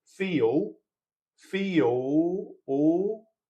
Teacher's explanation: Anyway, what commonly happens is this L in many accents commonly becomes something that's a little bit vowel-like, almost like an oo, as in goose, or like a W-like sound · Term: dark L